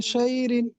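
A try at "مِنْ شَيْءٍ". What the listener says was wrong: শাই রিন নয়, শাই ইন। শাই ইন, রিন বলছেন আপনি, শাই ইন। হামজা দুধের,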